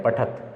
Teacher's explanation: आप इसको पठत बोलोगे तो इसका मतलब आपने थ हलंत बोला, एकदम से आपने खत्म कर दिया।